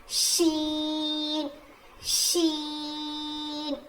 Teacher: उसके बाद आता है शी शी शी जुबान की नोक को सॉरी जुबान की नोक नहीं जुबान के बीच के हिस्से से शीन अदा होता है। जैसे जीम अदा हुआ था। · شین شین زبان کی نوک کو زبان کی نوک نہیں، زبان کے بیچ کے حصے سے شین ادا ہوتا ہے، جیسے جیم ادا ہوا تھا.